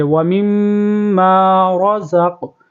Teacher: میم کے اوپر تشدید ہے تو وہاں پر یہاں پر غنہ بھی کریں گے، را کو پر کریں گے، وَمِمَّا رَزَقْ، یہاں پر زا کو قاف کے ساتھ ملائیں گے، زق، اور قلقلہ بھی کریں گے، وَمِمَّا رَزَقْنَاهُمْ يُنفِقُونَ۔